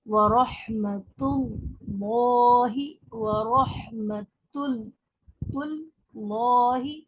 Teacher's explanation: ता को तो बारीक पढ़ेंगे लेकिन लॉ को मोटा कर देंगे। वरहमतुल्लाहि, अल्लाह के लाम को और रा को जब जबर पेश हो तो मोटा पढ़ते हैं।